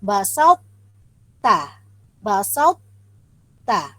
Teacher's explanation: Ambil perhatiannya, apabila huruf to yang sukun berjumpa dengan huruf ta tidak berlaku hukum kolkola. Yang nampak adalah sifat ittiba ataupun sifat ketebalan pada huruf to.